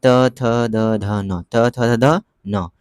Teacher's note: जीव का अग्र भाग दांतों से लगकर उच्चारण होता है। जीव का अग्र भाग लगकर दांतों से होता है, ठीक ना।